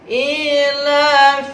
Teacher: Ijhar artinya jelas, safawi artinya bibir. Jadi ketika membaca him, bibir kita tertutup supaya tidak ada dengung. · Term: ijhar safawi